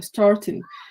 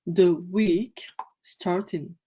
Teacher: Donc la prononciation est allongée, donc ça ferait starting. Et vous remarquerez qu'il n'y a pas de R. Donc ça veut dire que le R ne se prononce pas. Également, ici, pareil, starting, voilà, il n'y a pas de ing, pardon, il n'y a pas de G.